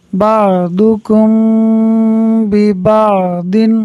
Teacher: میم ساکن کے بعد حرف با ہے، اخفاء شفوی ہوگا، یعنی میم ساکن میں غنہ کریں گے، ملا کر پڑھیں گے تو بعضکم ببعض غنہ کریں گے۔